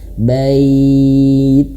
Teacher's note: Hadal bait, nah bait, bai-nya dilembutkan, tapi ingat huruf taknya dialirkan angin sedikit di ujung lidah